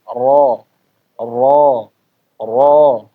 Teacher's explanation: Nah, jadi bagian belakang ini agak menaik. Makhrajnya nempel ya, lidahnya menempel bersandar di gusi, belakangnya naik. Jadinya suaranya kayak terkumpul di bagian tengah. · lidah itu seperti bagian belakang dicengkukkan ke atas ya, atau seperti membuat cekungan ya Bapak di bagian tengah. Nah, jadi bagian belakang ini agak menaik. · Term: ro tebal, huruf ro tebal